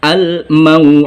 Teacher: Karena letaknya ada di akhir ayat, maka huruf dal ini berlaku hukum tajwid qalqalah kubro. Membacanya memantul dengan terasa karena kubro, besar.